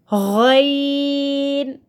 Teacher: جہاں سے خا ادا ہوگا وہیں سے غین ادا ہوگا حلق کے شروع سے جو منہ کی طرف ہے